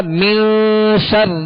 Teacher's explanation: را کے نیچے زیر ہے، را کو باریک پڑھیں گے